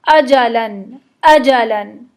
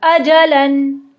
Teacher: हमज़ा है तो उर्दू की तरह, लेकिन हम उसको थोड़ा सा फॉर ग्रांटेड लेते हुए नरम पढ़ देते हैं, लेकिन हमज़ा अरबी में सख्त पढ़ा जाता है, एकदम स्ट्रेट फ्रॉम द थ्रोट